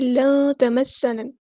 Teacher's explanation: نون ساکن کی آواز کو یہاں چھپا دیں گے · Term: اخفا